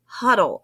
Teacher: the second syllable is not the stronger syllable it's the first syllable that's stronger · in the word huddle, you can tell that I said the first syllable a little bit stronger, huddle, and the second syllable kind of was a little quieter. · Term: unaccented, unaccented final syllables